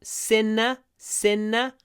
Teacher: Sinner, tip of the tongue goes up.